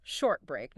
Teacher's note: The T sound at the end of short might blend into the B of break,